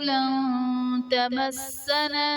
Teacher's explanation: لن تمسنا میں نون ساکن کے بعد حروف اخفاء میں سے تا ہے، تو یہاں پر اخفاء کا قاعدہ ہوگا، یعنی نون ساکن میں ہم غنہ کر کے پڑھیں گے